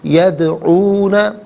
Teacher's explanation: دال ساکن ہے لیکن حرف قلقلہ ہے، تو ناظرین آواز لوٹتی بھی محسوس ہونی چاہیے